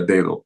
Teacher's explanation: Lo importante, si lo recuerdan al principio de aprender el vocabulario, que el delta griega es como el primer D de dedo, no el segundo. Si ustedes escuchan bien, no pronuncian los dos Ds iguales en la palabra dedo. El segundo D de dedo es un fricativo como zeta.